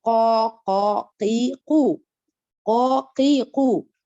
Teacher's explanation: La langue, si vous remarquez bien, elle est bien remplie. Elle est bien remplie, bien gonflée.